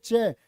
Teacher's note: चे होता आपका तालव्य, तालु से बोला जाएगा